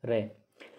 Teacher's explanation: जहाँ लुढ़कती है या वाइब्रेशन होता है तो आप बोल के देखो, रे में वाइब्रेशन होता है तो लुंठित या प्रकंपित रे।